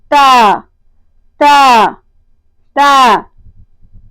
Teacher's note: جیسا کہ آپ دیکھ رہے ہیں تصویر میں کہ جہاں پر تیر کی علامت لگی ہوئی ہے تا تا تا، یعنی زبان کی نوک اوپر والے دانتوں کی جڑ میں ٹکرانے سے حرف تا ادا ہوتا ہے